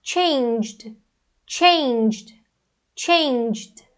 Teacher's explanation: Então, a gente vai ter esse J, o J é uma consoante vozeada, então vai ficar changed, changed, changed.